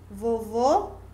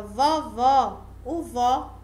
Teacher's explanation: observe que a palavra vovô ela é mais fechada e a palavra vovó vovó é aberto